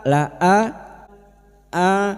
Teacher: hamzah yang berharakat alif kecil di atas Badal dua harakat kita panjangkan.